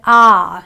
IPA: ɑ